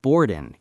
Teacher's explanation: But you said boardin'. You dropped the G.